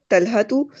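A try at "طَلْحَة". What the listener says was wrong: just the Talha, because you don't have to pronounce the last one.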